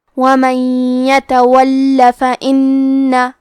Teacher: ہم 2 حرف کے برابر لام کو پڑھیں گے، کیونکہ تشدید کی اصلیت 2 حرف ہے.